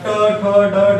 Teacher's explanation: आता ट ठ ड ढ म्हणा. जीभ आपली अशी फोल्ड करावी लागेल. फोल्ड करून त्या खडबड भागाला, टाळूच्या पाठीमागच्या भागाला आपल्याला चिटकावं लागेल. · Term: मूर्धन्य वर्ण